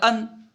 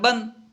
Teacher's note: ادائیگی میں بالکل نون ساکن کی مثل ہے، تنوین جو ہے ادائیگی میں پورا نون ساکن کی طرح ہے، جس طرح نون ساکن کو ادا کرتے ہیں تنوین کو اسی طرح ادا کرتے ہیں۔